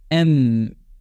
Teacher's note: एम जब आप बोलोगे तो मुंह तो बंद हो जाता है, तब नाक से आप गौर करना कि हवा निकल रही है, ठीक है, साउंड नाक के थ्रू निकल रहा है, एम, है कि नहीं।